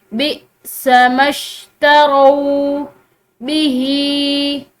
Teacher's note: बिस्मश, यहाँ पर हमजा इसके ऊपर सुकून की अलामत है, तो इस हमजा को झटके के साथ पढ़ा जाता है